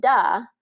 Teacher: you're saying the d sound instead of a th sound